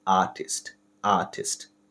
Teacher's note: British উচ্চারণে মূলত আরটাকে একদমই সাইলেন্ট রাখা হয়।